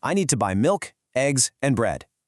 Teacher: See how it goes up on milk and eggs, but then finally falls on bread. · When you list things off, your voice naturally rises on each item, which signals to the listener, hang on, there's more coming. Listen, I need to buy milk, eggs, and bread.